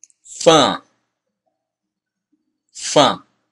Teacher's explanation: It's similar to fun, but it's more nasal. You feel all this region vibrating.